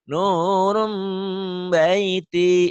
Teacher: N-nya berubah jadi M, nurum jadi M. Tapi disertai bindeng. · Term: iklab